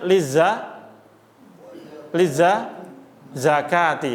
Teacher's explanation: Lizzakati bacanya panjang dua harakat